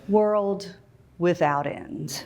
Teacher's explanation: If it's overly falling inflection, it sounds as if you have said the very last thing that will ever be said.